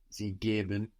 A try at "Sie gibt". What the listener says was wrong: Gibt. Sie gibt. Now the T crushes that E into an I. Sie gibt.